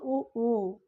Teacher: இப்படி இதழ்களை குவிப்பதால் பிறக்கும் எழுத்துக்கள் வந்து உ ஊ